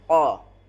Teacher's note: Qo bukan qof. keluar dari pangkal lidah terdalam. Suara lebih bulat dan tebal, bukan huruf kaf. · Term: huruf qof